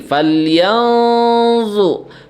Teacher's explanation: Falyanzu, nun mati ketemu dengan zo, itu hukumnya disebut dengan ikhfa ya, ikhfa. Zo-nya huruf tebal, jadi ada nih falyanzu